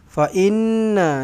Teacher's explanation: Nun sabdu dengungkan dengan dua harakat. Wajibul ghunnah.